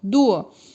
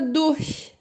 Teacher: O D e o R tem som de du. O R quase que vira um Azinho, du. E o CH tem o som do CH do ir, abrindo um pouquinho os dentes, né?